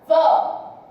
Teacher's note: O A foi mais forte, o O foi mais fraco. Então, o que eu fiz? Do mais forte para o mais fraco. Ditongo decrescente nasal oral.